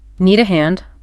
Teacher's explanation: Just make sure to use that rising intonation to make it sound like a question.